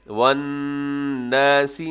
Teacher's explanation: نون مشدد ہے، یہاں پہ غنہ کیجیے گا